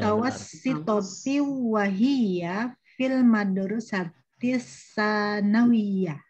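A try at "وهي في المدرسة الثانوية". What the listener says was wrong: Ayo wahia, ayo. Di sini tidak pakai apa namanya, tidak ada huruf tasdid ya. Jadi fil madrasatil mutawassitati wahia fil madrasatis tsanawiyati.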